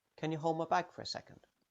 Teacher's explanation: In the last phrase, the D on hold will disappear.